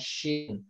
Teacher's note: huruf shin yang harus perhatikan adalah ya tadi menyebarnya aliran udara, makanya shin.